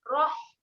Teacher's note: Ha sifat dia ada keluar angin. Rah. Kemudian huruf ha ni kena tekanlah di tengah kerompong.